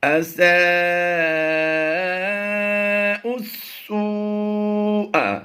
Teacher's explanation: حمزہ کو ڈائریکٹ ہم نے سین سے ملانا ہے۔ چار حروف، 1 2 3 اور یہ چار حروف ہم نے سائلنٹ کرنے ہیں اور حمزہ کو سین کے ساتھ ملائیں گے۔